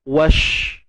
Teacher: Siapa yang dah faham tentang sifat, memang kita akan kata shin ni ada sifat tafashi, berhemburan nafas kita. Wash. Tu tafashi tu.